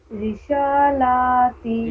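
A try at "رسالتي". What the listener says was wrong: رشا نہیں. دیکھیے تو ہندی میں پڑھیے تو اس کو کیا لکھا ہوا ہے. کیا لکھا ہوا ہے یہ. رشا نہیں ہے. دیکھیے رشا تو ایسے ہوگا لکھا ہوا. یہ ہوا رشا. رسا ہے، رسا. کیا پڑے گا اس کو. کیا پڑے گا اس کو. بس وہی تو سا بولنا ہے، یہی والا سا ہے. نہیں، اس کو پہلے پڑھیے. ہاں بس یہی والا جیسے سا آپ نے کہا نا، بس ری کے بعد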